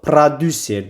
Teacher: Produser sözündə bir dənə o a ilə əvəz olunacaq. produser deyə tələffüs olunur.